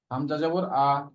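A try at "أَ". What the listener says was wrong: হ্যাঁ, হামজার উচ্চারণটাকে আরো মজবুত ভাবে, আমরা যেরকম করেছিলাম, হামজা হামজা আ আ ই উ, হঠাৎ উচ্চারণ ওইটা যেন ঠিক থাকে।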